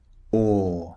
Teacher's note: Remember the shape of the mouth. The lips are very very rounded. O. And it's a long sound.